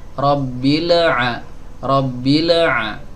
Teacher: Nah, hati-hati, lam yang ada di sini harus sama dengan lam yang ada di sana, yang sebelumnya tadi kita jelaskan. Tidak boleh ada qalqalah dan harus ada alirannya, setengah aliran suaranya.